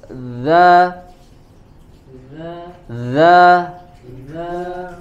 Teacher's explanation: ujung lidah ditempelkan ke ujung gigi seri bagian atas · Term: huruf dalal